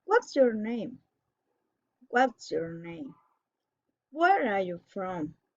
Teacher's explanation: a special question falling in intonation